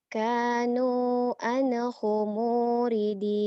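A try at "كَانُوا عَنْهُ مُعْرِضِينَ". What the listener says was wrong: Salah, kurang neken. Mur. Kurang neken.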